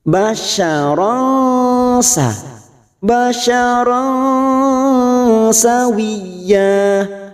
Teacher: kita samarkan bunyi tanwin pada huruf ro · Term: Ikfa Hakiki, ikhfa hakiki